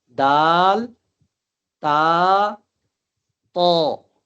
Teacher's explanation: تا پڑھتے وقت زبان کو تھوڑا سا کھلا رکھنا ہے، اور طا پڑھتے وقت زبان کو دائیں بائیں سے تھوڑا سا سمیٹنا ہے، سمیٹ کر اپنے مخرج کے ساتھ لگانا ہے اور یہ پر آواز میں نکلے گا